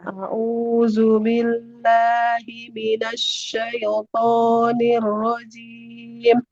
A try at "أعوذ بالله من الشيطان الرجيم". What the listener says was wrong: jangan syaya. Tidak syaya. Syaito. Syaito. Jadi bukan syaya.